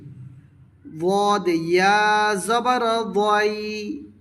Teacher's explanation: জিহবার side, উপরের দাঁতের গোড়া, বাই দিক হইতে সহজ হবে, বাই দিকে আদায় করিবে